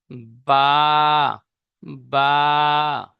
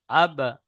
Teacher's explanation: দুই ঠোঁটের ভিজে অংশ হতে উচ্চারিত হয় বা